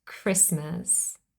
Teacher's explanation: this is not a French lone word but it contains a silent T